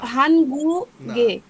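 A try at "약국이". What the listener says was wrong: হান কোথায় আসলে এখানে তো নাই ইয়া সর্বর্ণ ইয়া আছে এখানে এবং নিচে আছে গিয়ক নিচে গিয়ক ইয়াক গুগি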